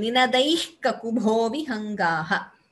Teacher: when the visarga is followed by ka, we get a jihvamuliya